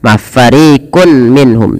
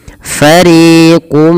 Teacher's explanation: tanwinnya masuk kepada huruf mim dan diganti bunyi suara Mim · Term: Idam bunah